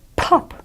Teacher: P's are pronounced very, very explosively, as you know.